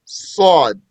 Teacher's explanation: Sod is an elevated letter. That means the tongue goes up. In which the tongue adheres to the top of the mouth.